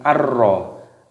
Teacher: idgham bila gunnah dimasukkan tanpa berdengung. Tidak boleh kalau kita didengungkan tidak boleh, harus langsung ar-ra.